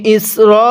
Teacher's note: আমার সাথে টান দিবেন ইসরাঈলা, এটাকে ইসরা পড়া যাবে না